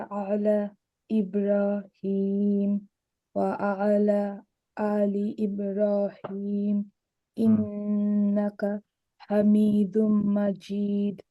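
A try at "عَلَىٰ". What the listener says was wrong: কিন্তু চেষ্টা করতে হবে আর একটু সুন্দর করতে, কারণ এই আইনের উচ্চারণটা আমি আরো ক্লিয়ার চাই সবার কাছ থেকে। আলা, আলা না, আলা। আলা গলাটা যত ভাঙবেন এই দূরত্বটা পড়ার সময় আপনার তখন অ্যাটলিস্ট এইটা মনে রাখবেন যে একটা আইন আছে, তখন দেখবেন আপনার কনসেন্ট্রেশন লেভেলটা বাড়বে।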